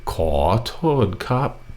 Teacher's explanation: And then ครับ has a high tone.